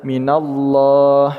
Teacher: Untuk kata 'Allah', kita melakukan tafkhim atau menebalkannya.